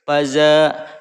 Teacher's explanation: alif mati yang sebelumnya berharokat fathah. Nah, itu adalah mad tobi'i, membacanya dua harokat.